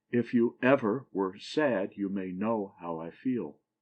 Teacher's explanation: a foot that has the last syllable accented and the first two not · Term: anapest